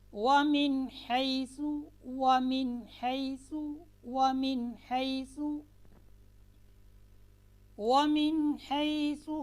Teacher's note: قاعدہ ہے کہ نون ساکن اور نون تنوین کے بعد، یہاں پر نون ساکن کے بعد حروف حلقی میں سے ہا آ رہی ہے تو نون کو ہم نے کیا کرنا ہے، بغیر غنہ کے واضح کر کے پڑھنا ہے۔